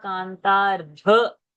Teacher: The dha mahaprana has to happen.